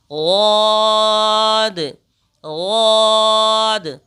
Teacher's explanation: اس کو ادا کرنے کے لیے بھی ہم زبان کے حصے کو اوپر اٹھا کر اور منہ کو بھر کر کے پڑھیں گے غاد غاد۔ ضاد کے اوپر ایک نقطہ ہوتا ہے، آپ دیکھ سکتے ہیں یہ ضاد ہے۔